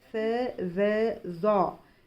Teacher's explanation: ज़बान की नोक ऊपर के दांतों के किनारे को लगने से स, ज़, ज़ अदा होते हैं। स और ज़ बारीक पढ़े जाएंगे जबकि ज़ बहुत मोटा और बहुत ऊंचा पढ़ा जाता है। उसके बाद हमने देखा त, द, त।